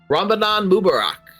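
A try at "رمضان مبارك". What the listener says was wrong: Close enough. A little bit different emphasis on certain syllables, but you're okay.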